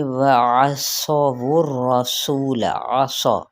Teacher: आइन को वस्ते हल्क से लेकिन बारीक